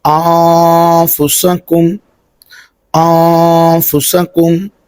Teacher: یہاں پر بھی نون ساکن کے بعد حروف اخفا ہے تو ہم یہاں پر اخفا کریں گے